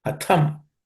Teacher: The tha is the second letter in the tha vargo, third class of consonant, so it has to be aspirated.